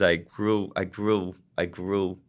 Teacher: the consonant R is almost like a w